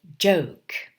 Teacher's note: in the mouth the air built up behind that closure but the separation of the organs is slow compared with that of plosives so that friction is a characteristic of the second part of the sound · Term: affricates